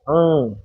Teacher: आप बोल के देखिए, अंग, नाक से, हवा नाक से निकल रही है, अंग, तो इसका उच्चारण पूरा नाक से होता है। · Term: अनुस्वार